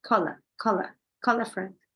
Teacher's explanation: The L and the A are joined. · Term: linking